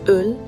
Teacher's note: Ö, which sounds like you're saying E, but rounding your lips